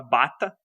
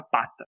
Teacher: Quando você fala ba, você tem uma vibração das cordas vocais. Quando você fala p, você tem a mesma articulação da boca, mas você não tem uma vibração nas cordas vocais. Essa diferença que você tem entre o som de B e P, por exemplo, é o que a gente mostra na linguística como uma distinção significativa.